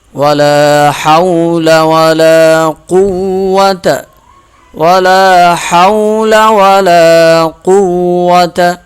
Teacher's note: ولا کو ایک الف کے برابر کھینچ کر پڑھیں گے